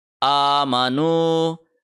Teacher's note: حمزہ کے اوپر کھڑی زبر ہے، 1 سیکنڈ آ لمبا کریں گے